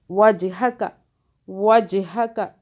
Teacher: جیم پہ جھٹکا آ رہا ہے، قلقلہ کا حرف ہے جیم